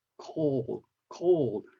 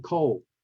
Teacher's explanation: that's not correct uh pronunciation if you want to sound better you need to say those word deep in your mouth because that's where the dark L is so a native speaker would sound something like cold cold rather